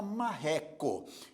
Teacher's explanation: porque a sílaba mais forte é a penúltima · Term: paroxítona